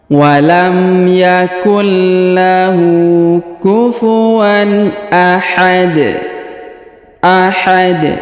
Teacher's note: Huruf da di ujung disukunkan atau dimatikan ya, sehingga kita baca pantul atau kita qol-qolahkan.